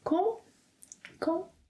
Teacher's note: You will do fine if you use ‘Como?’ with a rising intonation.